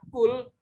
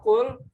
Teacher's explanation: suara qaf yang keluar di ujung tenggorokan